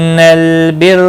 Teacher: را پیش کی وجہ سے پر پڑا جائے گا